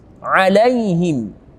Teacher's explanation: lam fathah bertemu dengan ya mati, kita bacanya lembut lai karena mat lin atau mat layin.